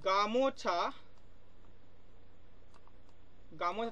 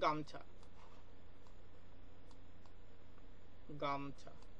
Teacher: দেখো এখানে মাঝেটা ও ছিল, ও, এই ওটা দেখো এখানে লোপ পেয়ে গেছে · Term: মধ্য স্বরলোপ